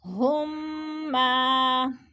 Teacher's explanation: میم ساکن کے بعد میم مشدد آ رہی ہے تو ادھر ادغام شفی